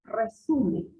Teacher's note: Entonces, la sílaba tónica está en la su.